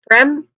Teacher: So the sounds of those letters are combined together are blended together to create one consonant cluster sound and then it's followed by a short E vowel sound and ends with an M sound which is a nasal sound